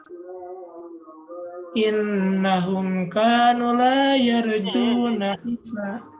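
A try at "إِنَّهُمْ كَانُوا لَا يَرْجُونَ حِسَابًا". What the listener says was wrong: Dua-duanya panjang. Kanu. Dua-duanya. Innahum dari tadi huna tadi masalahnya.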